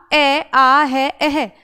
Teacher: अ आपका कैसा है? कंठ से बोला जाता है। अ के साथ में आपका आ है।